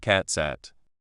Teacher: But in a sentence like the cat sat on the mat, the T at the end of cat and the S at the start of sat can join together, making it sound more like cat sat. The T and S sounds can join to make a TS sound.